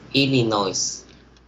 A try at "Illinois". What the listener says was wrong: It should be Illinois. So it is a silent S. Illinois.